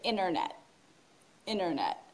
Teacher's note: In American English, we don't pronounce the T in internet. So we don't say internet.